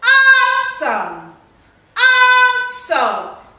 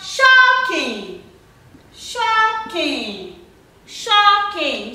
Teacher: We have a word with two syllables, but the first syllable is stressed.